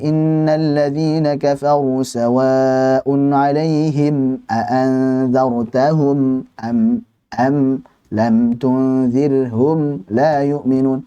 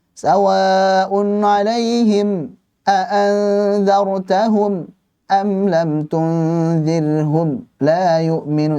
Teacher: Jangan pula diputus aliran suara mimnya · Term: izhar syafawi